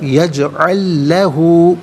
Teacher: یجعل میں لام ساکن، اس سے لہو کی لام کے ساتھ ملائیں گے اور لام کی آواز کو ادا کیا جائے گا۔ یجعل لہو، ہا الٹا پیش ہے ہا کے اوپر، اسے 1 الف کی مقدار کھینچ کر پڑھیں گے۔